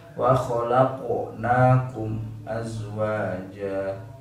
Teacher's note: sifat huruf qaf dan ta itu isti'la sifatnya, sehingga tetap harus isti'la ketika pelafalan dalam kondisi mati pun harus isti'la.